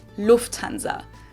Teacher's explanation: So the emphasis is on the first syllable